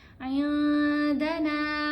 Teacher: نون کی آواز کو ناک میں چھپا کر پڑھنا ہے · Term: اخفا